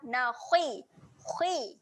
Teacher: Huruf kha adalah huruf tebal. Walaupun dia berbaris bawah, kita baca dengan tebal juga. Bunyi dia adalah nakhi.